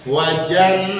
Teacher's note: Ya, dengungnya panjang nih, bisa di atas 3 harokat nih.